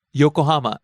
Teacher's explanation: starts low, rises on the second syllable. Co, stays high.